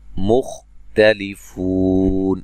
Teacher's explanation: खा को मोटा अदा करेंगे लेकिन हिलाना नहीं है